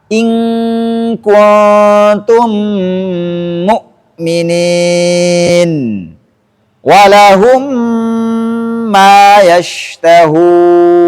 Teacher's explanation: memasukkan mim sukun ke huruf mim yang berharakat setelahnya dengan menjadi satu huruf yang bertasydid disertai dengan dengung